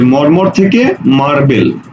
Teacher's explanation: প্রথম ম ঠিক আছে পরের ম টা ব হয়ে গেছে প্রথম র টা ঠিক আছে পরের র টা ল হয়ে গেছে অর্থাৎ দুইটা সম্যঞ্জন আলাদা হয়ে গেছে সম্যঞ্জন যখন আলাদা হয়ে যাবে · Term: বিষমীভবন